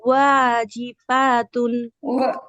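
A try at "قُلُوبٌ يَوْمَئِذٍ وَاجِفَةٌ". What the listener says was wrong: জিফাতুন আপু, ওয়া জিফা ফায়ের মধ্যে টান হবে না।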